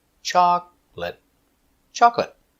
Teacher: remember two syllables chocolate not chocolate not three two chocolate stress is on the first syllable